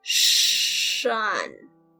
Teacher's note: it's the beginning of shrink and the end of fun. Keep the retroflex part of shrink.